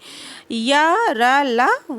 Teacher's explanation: अंतस्थ व्यंजन है। इनका उच्चारण जीभ, तालु, दांत और ओठों के परस्पर सटाने से होता है, किंतु कहीं भी पूर्ण स्पर्श नहीं होता। · अर्ध स्वर है। पूरा स्पर्श नहीं करते हैं, आधा स्पर्श करते हैं